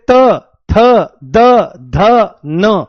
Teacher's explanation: त वर्ग बोला जाता है दांतों से